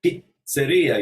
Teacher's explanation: There's two Z's in pizzeria. And again, in Italian, you stop for those double consonants.